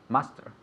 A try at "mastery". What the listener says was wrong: Mastery. Yes, with a Y at the end. So master with a Y at the end.